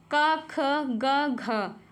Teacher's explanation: घा का जो उच्चारण स्थान है वो कंठ हो जाएगा।